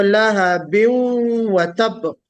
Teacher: जो तनवीन है, नून की आवाज है, वो वाव में मर्ज हो जाएगी